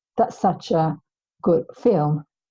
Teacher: so the stressed words in this sentence will be such good film